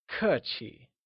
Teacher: Kè is pronounced using a falling tone and qi with a neutral tone